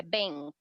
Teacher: É como se a gente estivesse engolindo o K. Então, não fica bank, é bank.